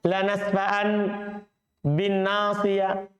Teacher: Karena nun sukun kalau ketemu ba menjadi mim